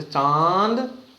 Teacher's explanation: देखिए अंग अनुनासिक में मुंह और नाक से साथ में आवाज आएगी